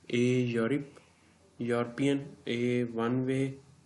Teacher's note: जो वाव की आवाज़ दे रहा है वो कॉन्सोनेंट साउंड है, वो वावल साउंड नहीं है